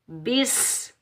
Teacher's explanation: سین پر ہم سیٹی کی آواز نکالیں گے